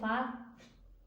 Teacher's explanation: ঠোঁটের নিচের পেট সামনের উপরে দুই দাঁতের আগার সঙ্গে লাগাইয়া ফা উচ্চারণ হয়